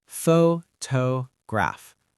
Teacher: The stress is on the first part. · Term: word stress